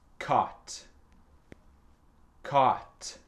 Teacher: Donc, c'est silencieux, le GH. C'est un peu dur à prononcer parce que ça emploie le son A.